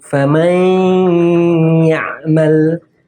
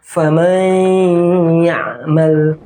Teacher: Di situ ada nun mati berjumpa dengan huruf ya, harus digunnahkan.